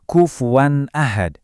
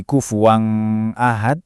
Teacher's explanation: Pas ketemu hamzah, contohnya kufuwan ahad, akhiran wan itu kan ada n-nya dan itu wajib dipotong bersih sebelum masuk A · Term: tanwin